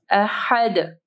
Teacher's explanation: ہا کو جو ہے واضح پڑھنا ہے، دال کے اوپر قلقلہ کرنا ہے